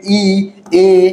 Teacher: ই, এ, এইগুলো উচ্চারণের সময় দেখবেন জিহ্বা কোথায় রয়েছে, জিহ্বা সামনের দিকে এগিয়ে আসছে। জিহ্বা কোন দিকে এগিয়ে আসছে, সামনের দিকে এগিয়ে আসছে।